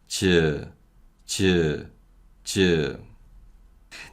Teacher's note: CH sound is voiceless with moderate aspiration. And 지읒 is a voiceless sound with mild aspiration. And again, this mild aspiration gives 지읒 that CH sound. · The initial position is with the body of the tongue touching the roof of the mouth. But again, the differences are all related to voicing and aspiration.